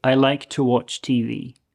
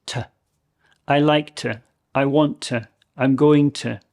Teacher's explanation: So the to becomes very, very short.